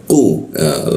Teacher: Lalu masuk ke ku. Ku itu posisinya di sikut tenggorokan, lidahnya dinaikkan sehingga rongga udara terkunci dan tidak ada hembusan udara. Ku, langsung masuk ke lam, di bawah hidung posisinya lam.